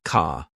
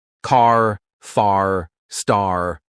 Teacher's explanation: British people say car like ca, but Americans, oh no, they stretch that R sound